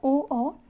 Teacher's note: ओ ओ इनको हम कंठ होस्ट बोलते हैं क्या बोलते हैं कंठ होट यानी कि इनको कंठ और ओट दोनों को मिलाकर बोला जाता है